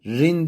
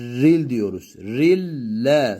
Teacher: Evet Daha sonrasında e dediğimizde yine lam harfine idgam ettiğimiz için tenvinden sonra lam harfi geldiğinden Burada da idğamı bila gunne yapıyoruz yani rin demiyoruz bakın rin demiyoruz ril diyoruz rille Sanki burada